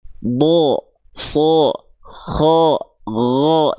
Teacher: impact dia tebal pada harakat fathahnya bukan murni vokal a lagi yang keluar tapi jadi seperti vokal o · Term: huruf tebal